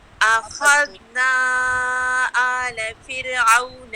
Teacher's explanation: آلَ دونوں کو نہیں اٹھانا، اور جو ذال ہے نا اخذنا کا ذال اس کو آپ نے ہلانا نہیں ہے